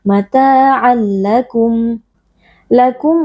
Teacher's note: mim sukun dibaca dengan jelas tanpa berdengung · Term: izhar syafawi